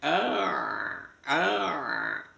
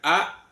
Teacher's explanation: Ain terletak di tenggorokan tengah. Biarkan mengalir bunyi ain.